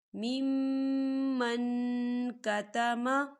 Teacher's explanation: ومن ازلم ممن کتم، ممن، یہاں دیکھیں میم مشدد ہے، یہاں غنہ ہوگا، اور من، یہاں دیکھیں نون ساکن ہے اور نون ساکن کے بعد کاف آ رہا ہے، کاف جو ہے اقفا کا ورڈ ہے، تو ہم یہاں نون ساکن کی آواز کو ناک میں چھپائیں گے